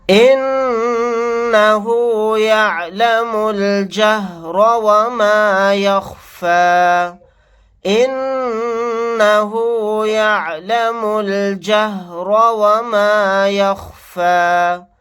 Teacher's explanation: نون کے اوپر تشدید ہے، یہاں پر غنہ کر کے پڑھیں گے. میم کو لام کے ساتھ ملا دیں گے، الف نہیں پڑھا جائے گا. را کو یہاں پر موٹا پڑھیں گے.